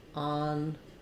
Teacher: We have the first syllable stress. En is the French on, so it would be better to think about it like ahn. It's the ah vowel.